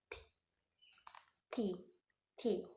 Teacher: the sound T is it's our tongue against to the alveolar ridge, then release the air, and this sound T is not voice like a P before, but the production is different.